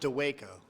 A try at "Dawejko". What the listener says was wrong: It's actually with a V. Dawejko. Dawejko. So the J's kind of silent. The W shouldn't be there.